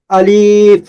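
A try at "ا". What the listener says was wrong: আলিফ তাড়াতাড়ি হবে, আলিফ।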